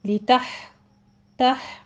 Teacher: ہا وسط حلق میں لے جا کے سٹاپ کیجئے، ہمس ہوگا اس کے اوپر